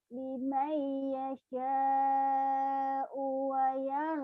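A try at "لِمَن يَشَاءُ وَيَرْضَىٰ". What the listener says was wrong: U-nya pendek. U-nya pendek. Liman yasha wa yarda.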